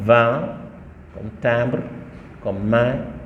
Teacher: Ensuite, la voyelle nasale E, je l'ai dit tantôt, c'est le E de mère, nasalisé, c'est-à-dire on lui fait porter un tilde qui devient un, l'air passe et par la bouche et par le nez